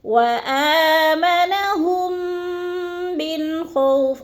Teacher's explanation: وآمنہم پہ ادھر بھی میم مشدد کے بعد، میم ساکن کے بعد میم مشدد آ گیا تو ادھر بھی ادغام شفوی ہے، سختی سے جماع کے ساتھ ہم نے پڑھنا ہے